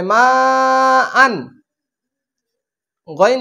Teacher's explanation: তানবিনের বামে গইন হচ্ছে ইজারে হাকির হরফ এজন্য এখানে গুন্নাহ ছাড়া পড়তে হবে